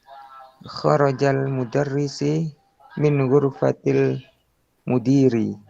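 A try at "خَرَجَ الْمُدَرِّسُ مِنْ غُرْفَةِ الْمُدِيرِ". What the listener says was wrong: Ya, kharajal mudarrisu. Ya, bukan mudarrisi, tapi mudarrisu min ghurfatil mudiri.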